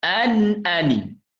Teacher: Nun mati jumpa hamzah, jawapannya izhar halqi, hukum dia. Izhar halqi, jadi kita kena jelaskan nun ni.